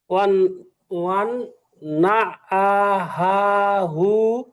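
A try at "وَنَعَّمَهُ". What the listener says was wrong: না হা না, আগেরটা মিম, এই প্রথমবার ঠিক বলছিলেন, অন্না আমাহু।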